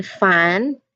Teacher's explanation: For the sound, again, here your top or front teeth, it will touch your bottom lip. The top teeth will touch your bottom lip